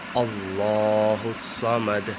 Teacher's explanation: اللہ والی لام کا بھی اپنا ایک الگ پرنسپل ہے کہ اللہ والی لام سے پہلے زبر یا پیش آئے تو اللہ کی لام کو پر کر کے پڑھا جاتا ہے، یعنی موٹا کر کے پڑھا جائے گا